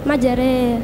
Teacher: Pertanyaannya yaitu tentang bacaan imalah yalam memiringkan bunyi fathah kepada kasroh